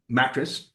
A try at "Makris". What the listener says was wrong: Makris. It's your accent. It sounds like you're saying mattress.